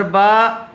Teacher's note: چونکہ بتلایا گیا تھا کہ کھڑا زبر، کھڑی زیر، الٹا پیش برابر ہوتے ہیں حروف مدہ کے، ان کو بھی حروف مدہ کی طرح تھوڑا کھینچ کر پڑھا جاتا ہے۔ تو با کھڑا زبر با اور با الف زبر با دونوں کو برابر کھینچ کر پڑھا جائے گا